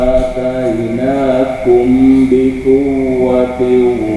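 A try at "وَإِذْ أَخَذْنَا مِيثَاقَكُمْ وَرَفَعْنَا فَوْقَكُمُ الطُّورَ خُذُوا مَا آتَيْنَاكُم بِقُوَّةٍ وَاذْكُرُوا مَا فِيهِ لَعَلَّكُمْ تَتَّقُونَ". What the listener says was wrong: Baik, catatan terakhirnya ketika mim bertemu ba harusnya ditahan 3. Karena mimnya sudah tidak ada tanda mati ya. Artinya harus ditahan 3 ketukan.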